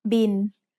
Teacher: Thai doesn't naturally have the L sound at the end of a syllable, so it changes to sound like the letter N.